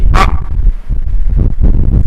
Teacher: c'est le A étranglé au milieu de la gorge. Donc, comme quelqu'un veut vous étrangler, mais on dit A.